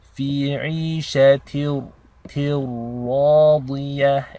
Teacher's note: Basically your ta is connected directly into a ra, as if the tanween is dropped. So there is no noon sound. It's a direct assimilation.